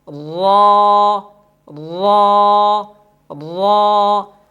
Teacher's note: مثال کے طور پر را کو پر پڑھتے ہیں، را کھڑا زبر را، را را را۔ اب دیکھیں زبان کی نوک بھی لگ رہی ہے اور زبان کی نوک کے ساتھ جو پشت زبان ہے وہ بھی 4 دانتوں کے مسوڑوں کے ساتھ لگ رہی ہے، جس کی وجہ سے را پر ادا ہو رہی ہے